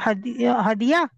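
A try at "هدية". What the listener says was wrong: हदिया। हदिया उर्दू में दाल के साकिन के साथ, लेकिन अरबिक में दाल के जेर के साथ, हदिया। है ना, हदिया।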